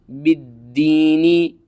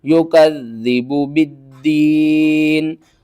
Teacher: أرأيت الذي یا پیش یو، کاف ذال زبر کذ، یو کذ ذال زیر دی، یو کذی با پیش بو، یو کذبو با دال زیر بد، دال یا زیر دین، بالدین نون زیرنی، بالدینی، اور وقف کی صورت میں نون کے نیچے جو زیر ہے اس کو آپ نے ختم کر دینا ہے